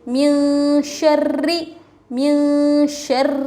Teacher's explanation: را کے نیچے تشدید، را کو باریک پڑھیں گے